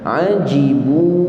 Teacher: Jim adalah huruf yang keluar daripada pertengahan lidah. Kita angkat ke langit kita. Ajibu, panjang kan wow itu.